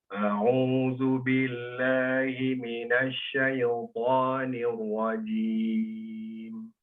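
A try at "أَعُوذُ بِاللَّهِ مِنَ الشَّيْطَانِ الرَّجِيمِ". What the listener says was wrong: Afwan, mengenai tafasyinya keluarkan lagi anginnya.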